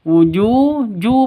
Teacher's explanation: ya mad asli fi wujuhihim wujuh ju panjang ya ju panjang ju ini panjang dua ketukan kenapa karena ada waw mati diawali dengan dhammah